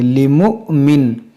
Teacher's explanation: یہاں پر دیکھیں حمزہ ساکنہ ہے، اس کو جھٹکا دے کر پڑھیں گے